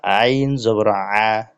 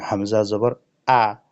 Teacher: আইন হলকের মধ্যখান চাপ দিয়ে, গলাতে চাপ দিয়ে তারপরে সেটাকে উচ্চারণ করতে হবে মোটা করে, আর হামজা মুখ খোলা রেখে স্বাভাবিকভাবে উচ্চারণ করতে হবে হলকের শুরু থেকে